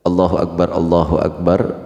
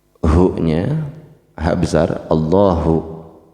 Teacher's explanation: Allahnya tafhim, Allah tebal. hu-nya ha besar, Allahu, kemudian alif kaf ak, kafnya sukun, a ketemu kaf sukun ak, bukan aik ya.